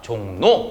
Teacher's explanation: 비음이 아닌 녀석이 변해야 되니까 유음이 변하는 겁니다. 뭘로 변하느냐? 니은으로 변하게 되는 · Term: 비음화